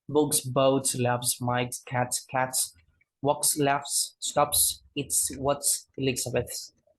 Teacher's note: like a normal alveolar fricative sound, voiceless alveolar fricative sound